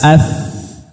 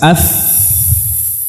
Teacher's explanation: Kemudian dari dua bibir. Ada fa yang pertama, bibir bawah bagian dalam, batinus syafah dengan ujung gigi seri atas.